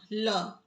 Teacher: कौन सा व्यंजन पार्श्विक है? तो ल